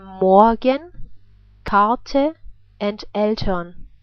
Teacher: The other way the R can be pronounced is like a reduced R sound, and it's pronounced like that before consonants, like in Morgen, Karte and Eltern. It's almost like as if we replace the R through the reduced R sound, like A.